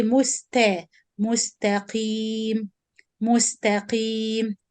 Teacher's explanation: And even the tafkhim of the qaf is not too much. We reduce it because the kasra reduce the tafkhim of the qaf.